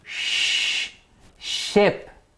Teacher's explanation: as you can hear the flow of air is continuous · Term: fricatives